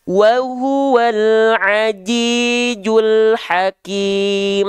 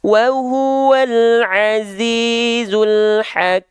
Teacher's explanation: Bedakanlah pengucapan huruf jim dan zai. Jim tertahan suaranya dan zai lembut suaranya.